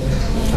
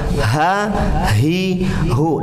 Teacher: Kalau tadi a tertahan suaranya a, i, u. Tapi kalau ha mengalirnya suara ha, hi, hu, dan tebalkan suara ketika keluar.